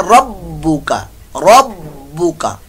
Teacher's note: रब्बुका रा पुर मोटा होगा और बा मुशद्दद कलकला हो रहा है, यहां जमाओ ज्यादा होगा, मुशद्दद कलकला। रब्बुका का को लंबा नहीं करना,